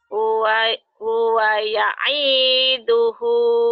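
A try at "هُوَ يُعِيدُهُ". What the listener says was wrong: Pendek. Huwa ya'idhuhu. Pendek semua. Hunya doang.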